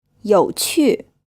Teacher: when the Q sound is followed by a U, then the U sound is like the U in French.